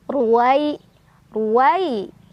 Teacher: dibaca secara tafkhim karena ro berbaris dah jadi ditebalkan ruwai ruwai ada harf Lin karena ada Ya Sukun sebelumnya ada Fathah di wau cara bacanya dilunakan atau dilembutkan